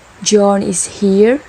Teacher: say it with rising intonation is a question